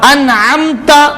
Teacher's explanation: یہاں پر اظہار کا قاعدہ ہو رہا ہے ماشاءاللہ. کیونکہ نون ساکن کے بعد حرف عین آ رہا ہے جو کہ حروف حلقی ہے